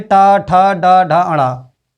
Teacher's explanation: मूर्धा मतलब तालु तालु का अग्रभाग, उसमें जब जीभ लगती है उसको कहते हैं मूर्धा